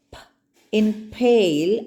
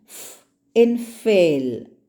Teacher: In p, the sound is suddenly released. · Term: plosives